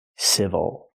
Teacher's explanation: Again, the stress is on the first syllable, so the second syllable is not stressed. We cannot say ill, we say o, civil.